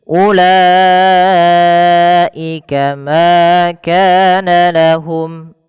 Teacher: Salah satunya di sini kalau dia bertemu dengan huruf hamzah maka dinamakan dengan izhar syafawi. Cara membacanya ketika mim bertemu dengan hamzah wajib jelas.